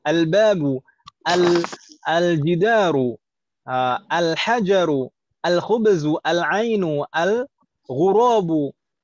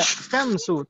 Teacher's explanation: Lamnya langsung idgham. Langsung masuk ke huruf shin.